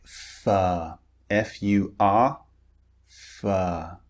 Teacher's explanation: the R is unpronounced because the R comes before a consonant, okay, a consonant sound, or it comes at the end of a word